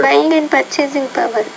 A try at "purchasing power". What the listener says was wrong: and when you say purchasing power, you definitely want to pronounce the P with more air. Power, purchasing power.